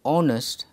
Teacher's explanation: The word honest begins with a vowel sound because the sound of the letter H is silent. Therefore, it is pronounced honest and an is used.